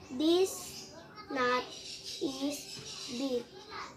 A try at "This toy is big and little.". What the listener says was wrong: Go back to this. This is? Toy, not. This toy, read it again.